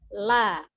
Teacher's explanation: huruf lam ya keluar dari ujung lidah yang bertemu dengan langit-langit di depannya jadi ini ada ujung lidah bertemu dengan langit-langit yang ada di